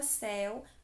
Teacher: com a vogal e depois a semivogal u também oral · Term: ditongo decrescente